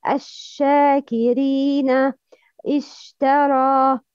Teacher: The tip of the tongue moves away from makhraj sheen, and the tongue is in front of the plate of the lower incisor.